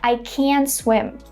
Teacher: because it's a negative sentence, the word can is stressed